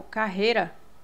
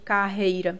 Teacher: Quando você fala carreira, dificilmente a pessoa pronuncia o I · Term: semivogal